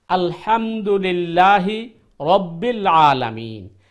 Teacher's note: ওই হা ওইটা গলার মধ্যখান থেকে আসতে হবে আলহামদুলিল্লাহ রব্বিল আলামিন আইন ও গলার মধ্যখান থেকে আসতে হবে চাপ দিয়ে